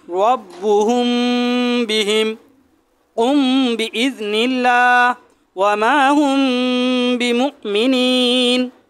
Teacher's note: মিম সাকিনের পরে যদি এই ইকফার হরফ বা আসে, মিম সাকিনের ইকফা বলা হয় এটাকে। মিম সাকিনের ইকফা গুন্নার সাথে মিম সাকিনকে পড়তে হবে